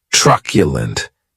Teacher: this word has three syllables and the stress is on that first syllable